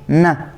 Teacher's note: یہ جو تالو ہے اس کے ساتھ زبان کی نوک لگانے سے یہ والا حرف ادا ہوتا ہے، ن۔ یہ والی جیسے ہی آپ زبان ادھر لکیردار تالو پر لگاتے ہیں تو یہ آواز نکلتی ہے، ن۔